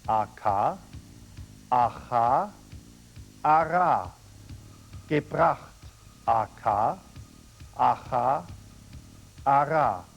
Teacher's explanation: The German R following a consonant, as in the word gebracht, is slightly rolled. Say AK first, then don't let your throat close completely on the K and say aha.